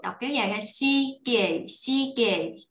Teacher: Chữ đầu tiên hơi dài một xíu, thì chữ sau mình sẽ đọc nhanh, rất là dễ.